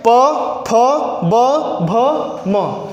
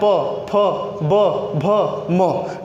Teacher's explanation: जब आप इन वर्णों का उच्चारण करेंगे तो देखिए आपके ओठ आपस में टकरा रहे हैं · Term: ओष्ठ व्यंजन